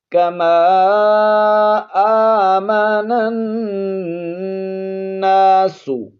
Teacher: نون پر شد ہے، غنہ کریں گے